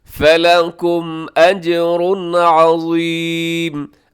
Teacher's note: اجر پہ تنوین ہے، تنوین کے بعد عین، تو یہاں بھی کیا کریں گے اظہار حلقی